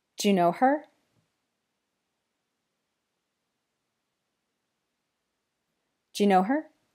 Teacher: the word do in connected speech often gets reduced to just a d sound. So In connected speech, do you ends up just sounding like Jew.